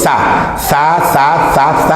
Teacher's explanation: Y la lengua se va al alveolo, si tú lo percibes.